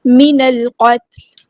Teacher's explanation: مطابق ادا کرنا ہے، جماؤ کے ساتھ پڑھنا ہے، من القتل، نون کو ہم نے لام کے ساتھ ملا دینا ہے، حمزۃ الوصل ہمارا ڈراپ ہو جائے گا ، لام یہاں پر لام قمریہ، قاف ہمارا ہیوی لیٹر ہے،